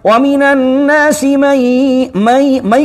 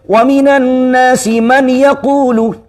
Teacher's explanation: کیونکہ نون ساکن کے بعد یقولو کا یا آ رہا ہے، اور یا یرملون میں سے، یا را میم لام واو نون، تو یرملون میں سے یا ہے، تو اب ہمیں مرجن بھی کرنی ہے اور نزلائزیشن بھی کرنی ہے، یعنی غنہ بھی کرنا ہے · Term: ادغام